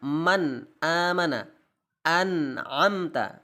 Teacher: membaca idhar itu tidak boleh menyamarkan suara nun sakinah dan tanwin. Jadi tidak boleh disamarkan, harus jelas.